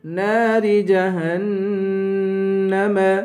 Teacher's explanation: جہنم پہ غنہ کریں گے نون پر